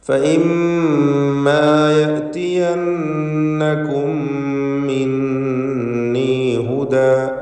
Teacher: സാക്കിനത്തായ മീമും ശേഷം ഹറക്കത്തുള്ള മീമും രണ്ടും ഇദ്ഗാം ചെയ്ത് ഇദ്ഗാം ഷഫവി നൽകി ഒറ്റ മീമാക്കി മണിച്ചുകൊണ്ട് ഉച്ചരിക്കണം.